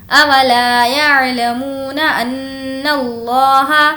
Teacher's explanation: نون پر تشدید ہے اس لیے ہم غنہ کریں گے